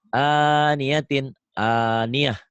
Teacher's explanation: ini tak marbutoh. Dihentikan bunyinya jadi ha. Ini tidak dalam tulisan ya.